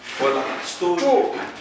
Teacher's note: So emphasis on what? Stole. That's what we call emphatic stress.